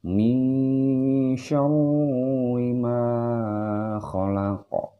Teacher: Nun mati menghadapi huruf shin besar. Disebut dengan ikhfa ausat atau ikhfa pertengahan, ikhfa tengah-tengah. Jadi harus dibaca dengung di sini